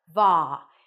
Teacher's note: you start with a V sound then the a is in Father